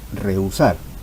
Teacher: la h intermedia tampoco impide la formación del diptongo en ese caso está formado por una vocal abierta la vocal · está formado por una vocal abierta, que es la vocal E, y una vocal cerrada, la vocal U. En cambio, si se repiten las vocales, no habrá diptongo.